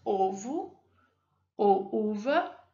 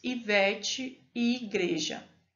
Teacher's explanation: Há, assim, duas formas de protrusão labial: arredondada, como quando pronunciamos ovo ou uva, e não arredondadas, como quando pronunciamos Ivete e igreja. · O u é produzido com os lábios arredondados.